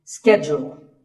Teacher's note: It's not so much that it's mispronounced, it's just that it's said differently in the UK and in the US. In American English, this is schedule. The first syllable is ske, and the second is jewel,